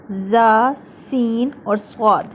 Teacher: ان کو صفیریہ اس لیے کہا جاتا ہے کیونکہ ان کے اندر صفیر یعنی سیٹی کی آواز آتی ہے۔ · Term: حروف صفیریہ